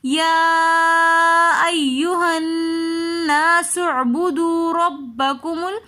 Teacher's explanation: ربکم میں را کے اوپر زبر ہے تو اس لیے ہم را کو موٹا کر کے پڑھیں گے